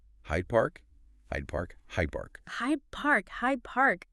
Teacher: The D sound in Hyde just turned into a B sound?